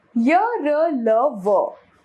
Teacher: इनके उच्चारण के समय जीभ मुंह के किसी भाग को पूरी तरह से स्पर्श नहीं करती है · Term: अंतस्थ व्यंजन